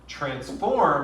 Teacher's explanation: transform is one of those weird words at least weird in english where you do stress the second syllable